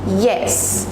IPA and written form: jɛs (Yes)